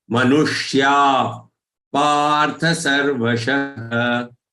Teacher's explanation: The sha here is again retroflex sha or cerebral sha.